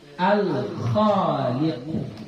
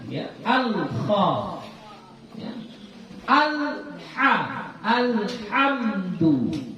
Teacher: Ini lamnya di sini dibaca zahir, dibaca jelas lamnya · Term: lam qamariyah